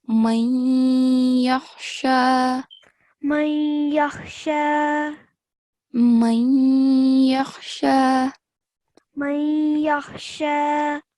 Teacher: because noon is followed by ya mushaddad, we have to make nasal sound